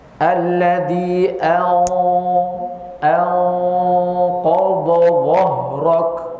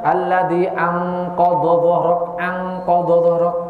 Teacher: karena huruf yang diikhfakan adalah huruf Isti maka tebal alladzi anqod dahrok nah tidak boleh dibaca alladzi anqodq anqodq Demikian